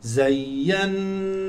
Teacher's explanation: الياء هنا مشددة فقل زين زين ليست زينا ليست ياء واحدة زين والنون مشددة غن حركتين